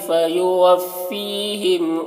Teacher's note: فی کو کھینچیں گے، یا مدہ ہے، ایک الف کے برابر کھینچ کر پڑھیں گے